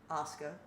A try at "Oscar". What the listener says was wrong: You say it like it starts with an O.